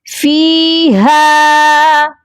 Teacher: فا کو بھی ایک الف کے برابر لمبا کریں گے اور ہا کو بھی ایک الف کے برابر لمبا کریں گے کیونکہ دونوں کے ساتھ حروف مدہ ہیں.